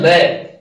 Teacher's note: पार्श्विक में आता है लय, अर्थात जीभ के दोनों तरफ, जिसके बोलने पर जीभ के दोनों तरफ से जो हवा निकलती है वो उसको बोलते हैं पार्श्विक